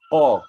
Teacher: makhraj huruf qaf adalah di belakang, di langit belakang. Di langit, lidah kita belakang lekat terus kat langit.